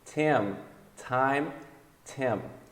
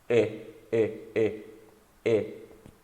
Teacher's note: É como se fosse o I, só que você tem que descer o queixo, ó. E. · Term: Short vowel